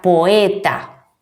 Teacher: Esta palabra une dos vocales fuertes, pero deben pronunciarse en sílabas diferentes. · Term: hiatos